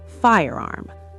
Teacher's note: Notice the R is very strong in American English.